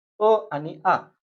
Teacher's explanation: अ आणि आ यांचा उच्चार एकाच उच्चार स्थानापासून होतो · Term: सजातीय स्वर